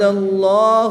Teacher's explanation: جلالت اللہ عز و جل کے لام سے پہلے حرف پر زبر ہے تو اس لام کو پر یعنی موٹا پڑھیں گے